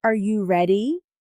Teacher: Your voice goes up at the end. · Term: intonation